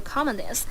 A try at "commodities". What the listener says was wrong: She says comedies. Of course, she wants to say commodities.